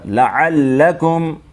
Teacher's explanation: عَلَكُمْ نہیں، لام کو ڈبل